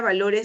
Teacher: la mayor fuerza de voz en la sílaba lo